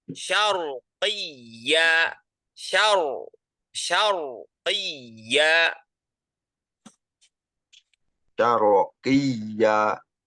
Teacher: rnya kita baca tebal itu termasuk daripada tafkhim